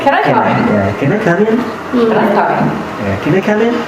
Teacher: jawabnya ya atau tidak berarti intonasinya naik